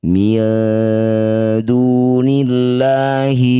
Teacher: Disebut bacaan namanya ikhfa aqrab. Dengungkan bunyi nun ketika dengung lisan sudah ada di huruf dal.